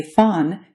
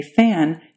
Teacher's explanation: You can get a feel for that by comparing the words fawn and fan in English. When you say fawn, your tongue is low and far back in your mouth, and when you say fan, your tongue moves forward.